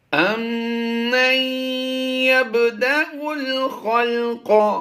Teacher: میم مشدد میں ہمیشہ غنہ ہوتا ہے